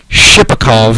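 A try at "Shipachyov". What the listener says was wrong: It's a Y-O-V. It's not a Shipakov.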